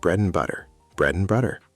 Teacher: and often sounds like un or n. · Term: reduction